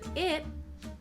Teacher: in the word i', we have a held T